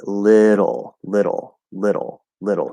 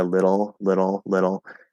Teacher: So we're tapping and then pulling into that half L. Some speakers will do it with a schwa. They'll say little, little, little.